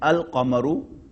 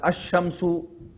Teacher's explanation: Lam is being pronounced in the beginning of Qamar, moon, but it's not being pronounced in the beginning of Shams, as in Ash-Shamsu, the sun.